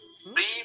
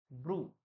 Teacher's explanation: কৃষ্ণ যজুর্বেদের মতন উচ্চারণ করবেন সেখানে ঋকারকে রু উচ্চারণ করতে হবে